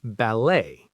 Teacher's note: But for ballet, we keep the French rule and the T is silent. · The stress is on the second syllable, also like in French.